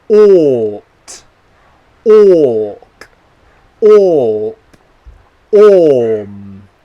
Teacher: my lips stay rounded the whole sound and only change when I make the next consonant. The common mistake that I see a lot of people making is they relax their lips halfway through the sound and they end up making the sound instead of the or sound. · my lips stay rounded until I make the next consonant sound, like this, ought, orc, orp, orm. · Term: long sound or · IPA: ɔː